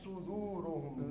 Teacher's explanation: ہا حلق کے اس حصے سے جو سینے کے قریب ہے